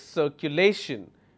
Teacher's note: my stress has to be on the second last syllable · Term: penultimate rule